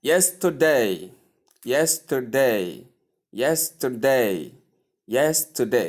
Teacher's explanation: So stress is placed on the first syllable.